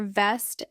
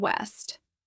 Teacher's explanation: For V, touch your bottom lip to your teeth. For W, round your lips without touching.